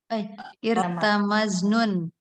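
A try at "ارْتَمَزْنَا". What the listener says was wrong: Irtamazna, bukan irtamaznon. Ditambah nun, irtamaznon. Irtamazna.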